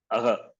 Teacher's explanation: Visarga is pronounced from the Kanta, from the throat. Visarga is pronounced from the throat.